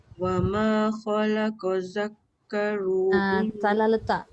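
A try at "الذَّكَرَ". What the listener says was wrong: Salah letak sabdu. Sabdu pada zal. Jadi tekan pada zal, jangan tekan pada kaf. Zal keluar tak ujung lidah? Khalaqaz. Khalaqaz. Bukan lam. Bukan lam, zal. Tapi yang buat tu ada bunyi desiran. Dia tak boleh khalaqaz zaka. Khalaqaz zaka. Saya terdengar bunyi desiran tu. Mesti lidah tak keluar kat ujung, betul? Dia kena keluar. Ni lidah kenakan gigi atas.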